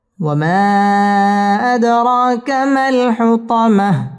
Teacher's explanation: ওয়াও ঠোঁট গোল করে উচ্চারণ করতে হবে।